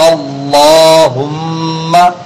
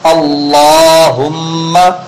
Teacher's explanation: حرف غنہ، اس لیے کہ ایک حرکت والے حرف کے بعد میم مشدد آیا ہوا ہے